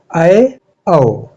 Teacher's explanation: अर्धविवृत स्वर वह स्वर होता है जिसके उच्चारण करते समय लगभग मुंह आधा खुलता है